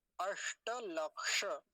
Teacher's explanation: इसमें तो मूर्धन्य शकार होता ही है